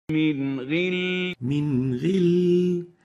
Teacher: So we don't over-velarize or exaggerate the tafkhim of the ghain.